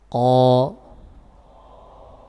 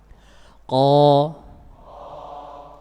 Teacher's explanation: Baik, makhraj huruf qaf, perhatikan di gambar situ. Lidah bagian belakang atau yang dikenal dengan pangkal lidah ini nempel pada langit-langit keras di belakang.